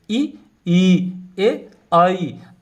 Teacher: उच्चारण के समय जीभ का आगे का भाग ऊपर उठता है उसे अग्र स्वर कहते हैं और ये चार माने जाते हैं